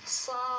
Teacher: Belakangnya kan ada dal sukunnya, ya. Artinya ini qalqalah, ya. Qalqalah, huruf yang memantul.